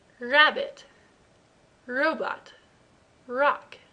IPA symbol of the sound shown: r